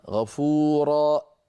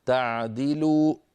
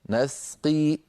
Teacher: ختم صوت حروف المد بهمزة عند الوقف. هذا منتشر، نحو غفورا يوقف عليها خطأ، غفورا.